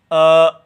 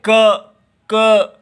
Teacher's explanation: क तो जिहवा मोटी होके जहां स्पर्श करती है पीछे वो जिहवा का मूल जहां स्पर्श करता है उसको कंठ बोलते हैं